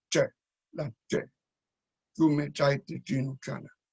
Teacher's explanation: la L inicial latina se palataliza en che